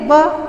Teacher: होठों पे, तो व का उच्चारण स्थान हम अलग से भी लिख देंगे दंतोष्ठ, क्योंकि दांत और ओठ टच कर रहे हैं तो दंतोष्ठ है।